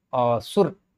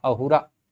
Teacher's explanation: देखिए संस्कृत का ये र यहां पर हो गया रा, अहुरा। र में अ सुनाई पड़ रहा है और हो गया है आ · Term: दीर्घ